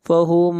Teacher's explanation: میم ساکن کے بعد میم ہے، یہاں پر ادغام ہوگا